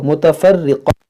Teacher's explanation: यहाँ पर फुलता को हा साकिना कर देंगे जब यहाँ पर वक्फ करेंगे